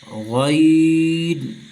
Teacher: غین کو جب پڑھیں گے تو اس کو خوب موٹا ہو کے پڑھیں گے، پر پڑھیں گے